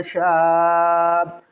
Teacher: بڑی مد ہے، 5 الف کی مقدار کھینچ کر پڑھیں گے